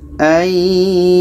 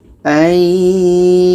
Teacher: Lam ini tetap dibaca, cuma agak tebal sikit. Ayyagul, agak tebal sikit karena di sini ada dua lam.